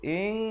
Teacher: Kemudian dipanjangkan 2 harakat ya, disembunyikan di belakang kaf dengan kadar 2 harakat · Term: hukum ikhfa